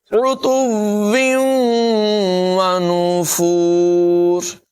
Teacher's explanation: بل لجوا فی عتو ونفور، فی عتو ونفور، یہاں پر عین کی آواز نمایاں کریں گے، تا کو واؤ سے ملانا ہے اور پھر واؤ اگلی واؤ سے ملے گی، یہاں پر ادغام ہوگا، غنہ بھی کریں گے